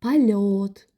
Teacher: O səsi verir. Yo səsi o səsi kimi tələffüz olunur. Çünki samitin yanında dayanıb.